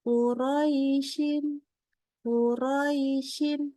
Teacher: panjang ro dengan ya sukunnya sama panjang tidak boleh ada yang lebih dominan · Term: sifat Lin